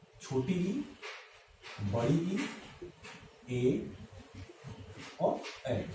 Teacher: इन 4 स्वरों के उच्चारण में हमारे ओष्ठ का जो शेप यानी कि जो स्थिति है वो अर्धवर्तुल है